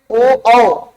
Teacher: कंठ के साथ साथ ओष्ठ का भी प्रयोग होगा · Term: कंठोष्ठ